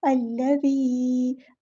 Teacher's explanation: الذی، زال کو نرمی سے ادا کرنا ہے، اور دال کے بعد یہاں پہ یا ساکن یا مدہ آ گئی ہے، تو ہم ایک الف کے برابر رکیں گے، مد اصلی کریں گے، ایک الف یعنی 2 حرکات کے برابر ہم یہاں پر رکیں گے، یا 2 کاؤنٹس۔